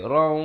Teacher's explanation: tapi bila datang waw jadi raw, masuk dengan dengung sekali